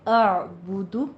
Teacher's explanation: جائز ہے، اعبدو، پہلے حمزہ پھر عین کی آواز آئے گی، با کے اوپر ضمہ ہے، ہونٹ گول کیجئے، اور دال کے اوپر بھی ہونٹ گول کیجئے